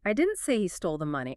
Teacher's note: Spike the pitch on money. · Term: pitch spike